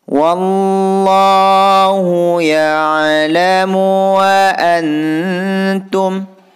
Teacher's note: Wallahu di sini hukum bacaan lafaz Allah yang harus dibaca tebal atau tafhim karena diawali harkat fathah